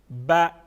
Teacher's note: با زبر کو ہمیشہ ہم نصف الف کے برابر اس کی ساؤنڈ بنائیں گے، زیادہ کھینچ کے نہیں پڑھیں گے، ٹھیک ہے؟ جس طرح میں نے آپ کو بتایا کہ زبر کی یعنی حرکت کی خاصیت یہ ہوتی ہے کہ اس کی اپنے ساؤنڈ کو، اپنے آواز کو پھر ہم فوقیت نہیں دیتے۔